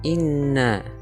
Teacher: inna, hukum bacanya khunnah karena ada nun yang bertasydid atau bersiddah.